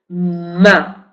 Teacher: La letra M representa el fonema nasal labial maleta, porque estamos también con la nariz, ma, ¿no? Cuando decimos el sonido nos va saliendo también por la nariz. Y aparte es labial porque tenemos que cerrar los labios.